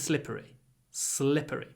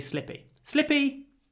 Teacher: the correct word is slippery slippery but I guess we're lazy we drop the r and we say slippy